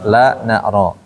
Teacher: Ujung lidah nempel ke gusinya di atas